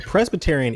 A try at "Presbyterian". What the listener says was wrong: yeah, I think you added an extra syllable in there too.